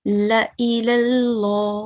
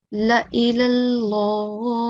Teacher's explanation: I am not prolonging the lam for more than 1 second.